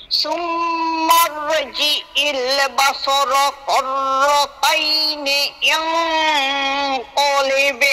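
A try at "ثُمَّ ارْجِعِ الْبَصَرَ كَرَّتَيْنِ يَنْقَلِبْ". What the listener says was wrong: শোনেন, এইটা ছোট কাপ, আপনি বড় কাপ বলে ফেলছেন। কার কার কার র কার র কার র।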